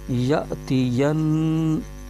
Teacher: زبر یا، تا زیر تی، یا تی، یا نون زبر ین، نون مشدد میں غنہ ہو رہا ہے